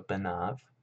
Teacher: This vav, instead of being a holam, actually functions as a vav consonant